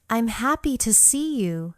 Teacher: In the second version, your voice rises on happy. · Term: intonation